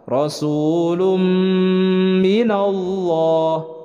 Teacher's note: Ini adalah waw sukun sebelumnya berharokat dhammah, itu adalah mad tabi'i dibacanya dua harokat. Rasulum, tanwin bertemu dengan mim adalah idgham bi gunnah. Jadi disertai dengan gunnah, ditahan dua harokat.